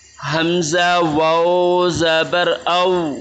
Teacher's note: ये जो है वाओ लीन है, इसको झटका भी नहीं लगाएंगे और लंबा भी नहीं करेंगे, न ही मजहूल पढ़ेंगे, इसको नरमी से अदा करेंगे